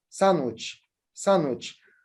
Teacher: I dropped the da sound in this word. So this is elision.